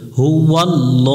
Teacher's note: আল্লাহ শব্দের ডান পাশে জবর আছে, এই জন্য লামটা মোটা করে পড়তে হবে। লামের উপর খারা জবর 1 আলিফ টান দিয়ে পড়তে হবে।